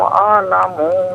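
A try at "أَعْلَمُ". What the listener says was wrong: اعلم میں میم کو کھینچیے مت، اعلم بما لبثتم،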